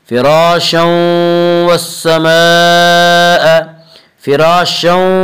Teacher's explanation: فراشا، الف مدہ، الف میں جہاں مدہ ہوتا ہے الف سے پہلے زبر ہوتا ہے اور الف مدہ کو ایک الف کے برابر کھینچ کر پڑھتے ہیں